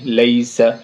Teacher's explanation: اور پہلے یا سے پہلے کیا ہے؟ زبر ہے، تو یا لین ہو جائے گی. لیس، جلدی سے بولیں گے مدہ نہیں